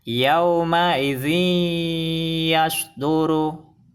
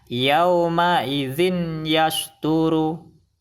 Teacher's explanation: Kesalahan baca yang kedua, man yaqulu, salah, karena bacanya harus dimasukkan ke huruf idgham bi gunnah dan disertai dengung 2 harokat